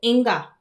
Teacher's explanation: कंठ से होता है और नासिका से होता है।